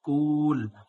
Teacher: কাফ হচ্ছে ওয়াওকে ধরেছে, এজন্য কাফ বলার সময় ঠোঁটা গোল হয়ে যাবে।